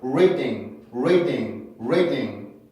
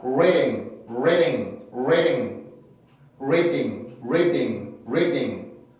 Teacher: D 발음 자체도 가볍기는 하지만 플랩을 해줬을 때 더 가볍게 소리를 만들어낼 수 있어요.